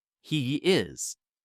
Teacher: If you link them, you get a small Y sound. He is. It's subtle, but without it, the transition between he and is feels abrupt and unnatural.